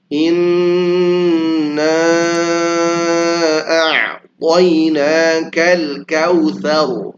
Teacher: Nun yang bertasydid maka dia harus didengungkan dengan tempo yang dipanjangkan ya. Nggak boleh buru-buru.